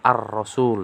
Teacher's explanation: Bacaan lamnya jadi idgham, jadi hilang, masuk ke huruf ro. Biasanya ada tanda tasdidnya di situ. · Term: alif lam syamsiyah